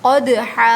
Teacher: قاف دال زبر قد، حا دو زبر حن، قدحن، یہاں دال پہ قلقلہ ہوگا، ساکن ہے